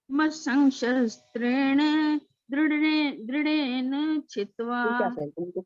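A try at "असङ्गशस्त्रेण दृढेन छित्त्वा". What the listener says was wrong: Aunty इकट्ठा जोड़ो मत ना, मसंग शस्त्रेण आप इकट्ठा बोल रहे हो। मसंग मसंग पूरा बोल दो। मसंग शस्त्रेण दृढेन छित्त्वा।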